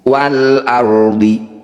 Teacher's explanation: Cara baca ro dengan tebal, kita kurangi getaran pada huruf ro. Wal ardi, jadi tidak boleh dibaca wal ardi. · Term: ro tafkhim